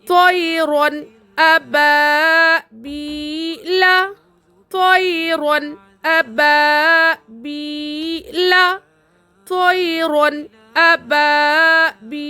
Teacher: کیسے؟ تنوین کے بعد حرف حلقی میں سے حمزہ آ رہا تو نون کو ظاہر کر کے بلا غنہ کے جلد پڑھیں گے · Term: اظہار